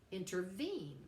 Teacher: Anapestic, intervene, we have three syllables with the stress on the third.